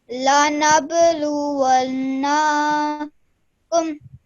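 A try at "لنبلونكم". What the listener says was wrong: What you did there was you elongated the na sound instead of the noon gunna sound. So we are only holding that nasal sound in our nose for 2 seconds.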